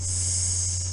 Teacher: Now there is still enough for an opening for airflow to continue, but the opening is narrow enough that it causes the escaping air to become turbulent, hence the hissing sound of the s. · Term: hissing sound of s